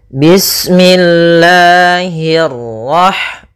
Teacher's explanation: Nah, di sini pada lafal Allah, Allah itu ada mad thabi'i pada lafal lanya. Nah, di sini kita panjangkan dua harakat. Bismillahirrah kemudian hnya tipis, kasrah bertemu ra yang tebal.